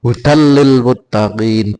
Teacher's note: Idgham bihuna ya. Tanwin bertemu lam. Tanwinnya hilang masuk ke dalam lam. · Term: idgham bilagunah